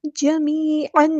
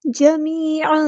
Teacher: تنوین کی جو آواز ہے اس کو ہم چھپا دیں گے ، جمیعن نہیں جمیعا ثم فا کو نرمی سے ادا کرنا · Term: اخفا